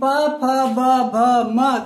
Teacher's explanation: जब तक आप ओष्ठ को नहीं मिलाएंगे, नहीं बोलेंगे मिला करके, ओष्ठ के अलावा इसका उच्चारण हो ही नहीं सकता। आप क्या कीजिए, मुंह खुला रखिए और बोलिए पा, आप नहीं बोल सकते हैं।